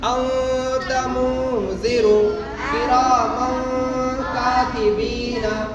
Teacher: कह के बाद के बाद हुरूफ़े इख्फा में से कोई भी हर्फ आया तो नून की आवाज को नाक में छुपाकर पढ़ेंगे